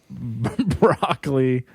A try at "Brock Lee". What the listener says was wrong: It's Brock Lee. There's a pause.